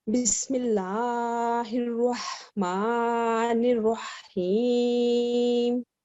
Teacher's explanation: और जी इसके बिल्कुल बाद रॉ है और उसके ऊपर शद्दा है, नून को रॉ के साथ मिलाएंगे और रॉ के ऊपर फतहा है और इसको पूर करके पढ़ेंगे।